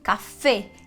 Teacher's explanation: o acento só faz a sílaba tônica estar forte não vai mudar a pronúncia da vogal né então café e não café como a gente diria no